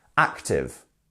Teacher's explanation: you're going up then down